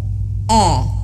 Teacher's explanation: mulutnya harus benar-benar dibuka ketika Hamzah dan terpotong suaranya di awal vokalnya karena huruf hamzah ini dia memiliki sifat jahar jadi terputus suaranya